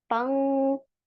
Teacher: पंग, नून छुप रहा है उसमें, पनखा नहीं बोल सकते आप, पनखा, पनखा। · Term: इक्फा